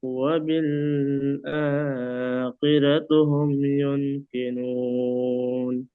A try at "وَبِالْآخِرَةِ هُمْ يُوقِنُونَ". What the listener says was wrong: তবে এখানে আপনি পড়েছেন আখিরাতুহুম পড়েছেন, এখানে আছে আখিরাতিহুম, তার নিচে জের আছে।